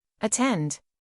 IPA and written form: əˈtend (Attend)